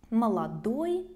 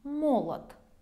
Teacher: Also notice that the stress will change. Молодой, of course, in the end, and молод on the first syllable.